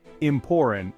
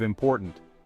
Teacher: In fact, in America, T-glottalization seems to be on the rise. Young people are especially likely to swallow their T's, leading to more and more instances of Americans saying things like "important" instead of "important." For linguists, this is an important statistic.